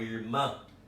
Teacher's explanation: Ela é uma oxítona, a última sílaba é forte.